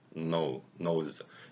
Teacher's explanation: 우리말 니은과 영어의 N은 완벽하게 일치합니다. 목젖도 울리고, 그렇죠.